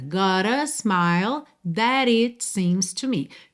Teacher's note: Então aqui temos dois rararã, duas letras T's que viraram rararã.